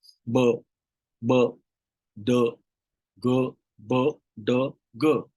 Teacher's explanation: no puff of air is released, मतलब कुछ एयर आता नहीं. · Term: non-aspirated